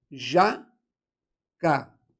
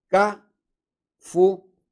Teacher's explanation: Cafuné tem a última sílaba tônica. E ela é uma oxítona terminada em E.